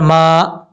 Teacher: میم الف زبر ما، میم کے آگے جو الف ہے یہ الف مدہ ہے، ایک الف کی مقدار اس کو لمبا کر کے پڑھیں گے